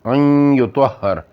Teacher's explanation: ادغام ناقص نی مثالاں این یطہر تے نون نی آواز تھوڑی جی باقی رہی